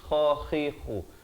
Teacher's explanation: kha di hujung kerongkong ni